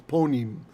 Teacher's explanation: It came from panim, became punim. Actually, the ah is oftentimes an O in Ashkenaz pronunciation